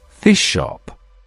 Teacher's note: Here the S assimilates to the following sh sound.